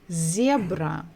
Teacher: so we stressed the first syllable